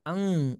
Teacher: pangkal lidahnya naik ya Sehingga bunyi suara itu dia menjadi apa menjadi tebal